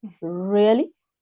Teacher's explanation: really first syllable is stressed